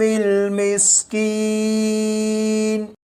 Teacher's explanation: سین کو سختی سے پڑھا جاتا ہے یعنی سیٹی کی آواز کے ساتھ۔